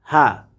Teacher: এই হাটিকে আমরা কণ্ঠনালী শুরু হতে উচ্চারণ করব